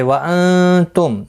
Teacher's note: نون ساکن کے بعد حروف اقفا کا تا اقفا حقیقی ہوگا، میم کے بعد تا آیا ہے، اظہار شفوی ہوگا، گنہ نہیں کریں گے.